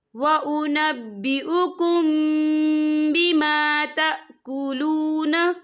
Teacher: यहाँ देखिए व उनब्बिउकुम, यहाँ मीम साकिन है, मीम साकिन के बाद जो है बा आ रहा है, तो यहाँ पर इक्फा शफ़ी होगा और हम यहाँ गुन्ना भी करेंगे।